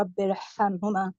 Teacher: را ساکن سے پہلے اگر زیر دوسرے کلمے میں ہو تو بھی ہم اس کو پر پڑھیں گے